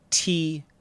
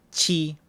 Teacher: T, tongue tip up. Chi, tongue tip down.